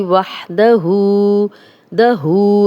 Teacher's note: वाव पे होंठ गोल करेंगे, हा की क्लियर आवाज़ आएगी, इसको 2 आँखों वाला हा नहीं बनाएंगे, वहदहु नहीं पढ़ेंगे, वाह ये वाली साउंड आएगी, वहदहु दहू।